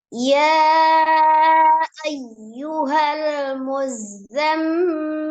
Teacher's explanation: Muzammil ada zai bertasdid, kemudian mim bertasdid wajib ghunnah ya, dia ghunnahkan.